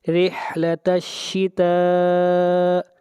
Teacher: شتا کے اوپر مد متصل ہے، اس مد کو 3 الف کے برابر لمبا کریں گے. مد متصل وہ مد ہوتی ہے جہاں پر حروف مدہ کے بعد حمزہ اسی کلمہ میں ہو.